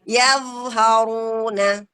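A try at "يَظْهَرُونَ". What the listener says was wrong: Jangan mantul, Bun. Jangan yadh.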